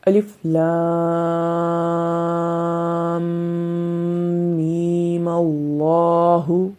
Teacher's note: یہاں پر میم کے اوپر مد نہیں کریں گے جب وصل کریں گے